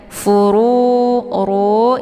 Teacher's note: Furu ini dibaca tebal ya karena harokatnya zummah, kemudian nurunya dipanjangkan 2 harokat karena ada waw sukun sebelumnya harokat zummah, ini dinamakan dengan mad tabi'i zahiri.